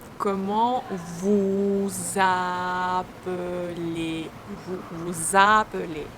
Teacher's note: as the next word starts with a vowel, we can pronounce this S letter as Z sound